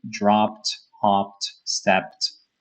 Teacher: a lot of the words that end with P are going to sound with a T because the P naturally is a strong letter.